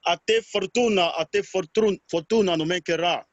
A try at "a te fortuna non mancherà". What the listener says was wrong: Okay, but if you realize you're jumping on some letters. For example, fortuna. Fortuna is like, it's not important for you. A te fortuna, a te fortuna. A A te fortuna, a te fortuna, a te fortuna.